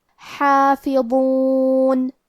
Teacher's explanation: ضو کی ادائیگی زبان کے سر اور اوپر والے دانتوں کے اندرونی کناروں سے ہے. کیونکہ ضو حروف التفخیم میں سے ہے تو ہم یہ حرف کو موٹی آواز میں پڑھیں گے. · حرف الحا کو ہم حلق کے درمیان والے حصے سے ادا کریں گے. پھر یہاں حرف الضو ہے اور ضو کی ادائیگی زبان کے سر اور اوپر والے دانتوں کے اندرونی کناروں سے ہے.